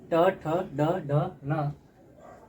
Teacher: मुर्धा से ट वर्ग ट ठ ड ड न री र और मुर्धन स का उच्चारण होता है